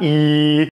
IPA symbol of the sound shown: i